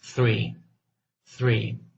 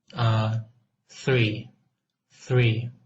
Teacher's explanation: When producing the sound we just looked at, the voiceless dental fricative th, you should not feel any vibration